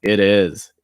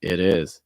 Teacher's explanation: So to give you a quick taste of that, when you have a quick sentence like this, it is, notice that T takes fast D sound